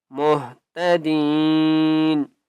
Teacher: یا مدہ ہے، دال کو ایک الف کی مقدار کھینچ کر پڑھیں گے